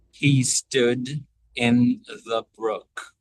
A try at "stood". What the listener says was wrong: Did you feel how stood you kind of cut off the vowel early, like stood, like you went right to the final consonant. So think of he stood. Extend that a bit.